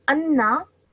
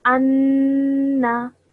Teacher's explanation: So when I say it, I hold the sound of noon in my nose for 2 seconds when I say it. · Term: nasal sound